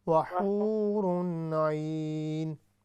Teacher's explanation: حو کو لمبا کریں، واو مدہ